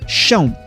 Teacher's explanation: o PL no início passou por um processo de palatalização e virou ch, ou seja, chan.